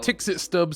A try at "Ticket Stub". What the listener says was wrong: Also, I believe Pepper earlier, and I have made this mistake until earlier, it is supposed to be pronounced Ticket Stub. If I read that message way up higher in the chat earlier, the mispronunciation is pronouncing the X as